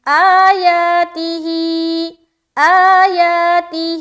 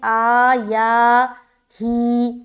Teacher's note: تین جگہ کھینچیں گے، آ یا ہی، اور تی کو بالکل جلد ادا کرنا ہے